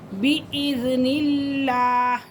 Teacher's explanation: لفظ اللہ کی لام سے پہلے کیا ہے؟ زیر، تو لفظ اللہ کی لام کو کیا پڑھیں گے؟ باریک